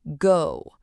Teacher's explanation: Do you feel how your lips are pushed forward into a tight little circle?